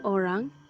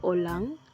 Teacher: penggantian konsonan r kepada konsonan lateral l